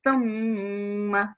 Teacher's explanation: So and then meme, again, the tha sound was not correct, and the meme with shadda. So we're going to give a nasal sound to the meme.